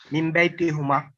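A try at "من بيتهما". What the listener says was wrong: It is again hima. So wherever there is a who, you are making it kasra.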